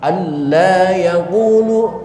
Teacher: sama sekali tidak terdengar sisa suara nun mati, bukan alla, bukan, tapi alla, maka disebut idgham tam.